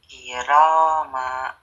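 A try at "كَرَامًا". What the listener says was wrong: Ayo, mahnya pendek aja. Mah, gitu aja. Kalau Kakak Rehan, kiroma. Berarti mahnya panjang.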